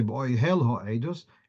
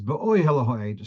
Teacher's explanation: So the stress is on the penultimate syllable. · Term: mil-el